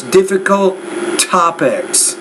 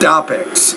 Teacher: Notice difficult topics, not topics. So you had to pronounce that T with more air.